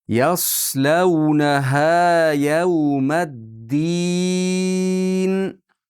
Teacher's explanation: Yas yog'on qiling. Yas sin bo'lib qolmasin.